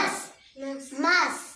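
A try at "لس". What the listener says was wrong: नहीं, मीम और नून तो नहीं है, लाम है, लस। लाम की आवाज आएगी ना शुरू में, लस।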